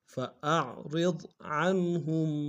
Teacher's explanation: ہم میں میم ساکن میں تھوڑا سا غنہ کریں گے